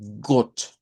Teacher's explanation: utilizar una o corta como u